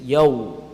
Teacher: what is the makhraj of waw? Is the partial meeting of the 2 lips.